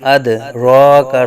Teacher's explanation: آگے دال ساکن میں قلقلہ خوب ظاہر کریں گے